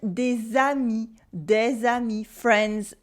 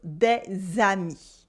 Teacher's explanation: with a silent S at the end and a liaison in the middle